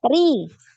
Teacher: Ri biasa ya, tidak naik pangkal lidahnya